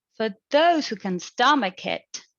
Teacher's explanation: focus domain this is abroad focus as well for the intonation in the first ip it is a rising tone